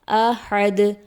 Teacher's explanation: دال حرف قلقلہ میں سے ہے، اس لیے حالت وقف میں دال کی آواز پلٹ کر واپس آئے گی۔